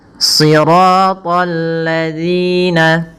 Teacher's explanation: Kemudian pada lafal si, ya, tebalkan pangkal lidah kita atau shadnya kita tebalkan dengan mengangkat pangkal lidah kita